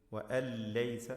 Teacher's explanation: ഇദ്ഗാം ബിലാ ഗുന്ന അല്ലെങ്കിൽ ഇദ്ഗാം ബിഗൈരി ഗുന്ന, ഗുന്നത്ത് ചെയ്യാതെ മണിക്കാതെ പൂർണ്ണമായും ലയിപ്പിച്ച് വഅൻ ലൈസ എന്ന് പാരായണം ചെയ്യണം.